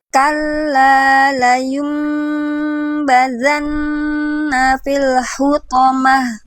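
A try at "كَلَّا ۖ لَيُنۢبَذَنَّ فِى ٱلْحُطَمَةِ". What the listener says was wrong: Sip, bagus.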